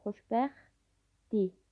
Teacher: İstiyəsdir sözündə t samiti d samitinə çevrilir. Xoşbəxtdir sözündə isə t samiti tələffüz zamanı düşür.